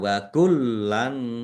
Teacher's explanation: Lamnya ada tasdidnya. Wa kullan, lamnya ada tasdidnya dibaca double ditekan biar tampak, ya, biar tampak doublenya.